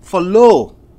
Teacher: Follow is a verb. So, follow, you are stressing on low.